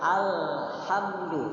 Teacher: tidak boleh kita membaca al, nanti jadi qalqalah. Cukup kita tahan. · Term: tawassut